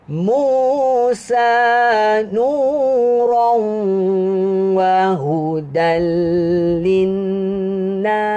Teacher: Siulan huruf sin itu mestilah kedengaran dengan jelas. Sebab dia mati.